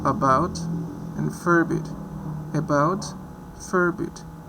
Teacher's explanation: So with this one we have the schwa, that it's low, spread, relaxed. It's not R coloring. It's the length is short